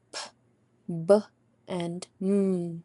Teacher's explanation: Bilabial sounds are when both lips come together to produce a sound